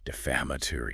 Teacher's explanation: Five syllables. Stress on the second one.